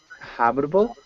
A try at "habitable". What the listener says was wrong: Yeah, you just want to pronounce the H. Good.